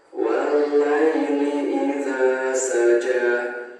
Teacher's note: huruf dzal sama huruf j ini dibaca panjang, satu alif atau dua harokat